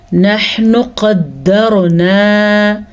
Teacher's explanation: دال کے اوپر شد ہے تو شد کو ادا کریں گے اور را کو پر پڑھیں گے, کیونکہ را ساکن سے پچھلے حرف پہ زبر ہے, اس لیے را پر پڑھی جائے گی.